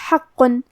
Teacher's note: قاف کو ہم زبان کی جڑ اور تالوں کے نرم حصے سے ادا کریں گے اور کیونکہ اس پہ تشدید ہے لہذا ہمیں 2 حرف کے برابر قاف کو پڑھنا ہے.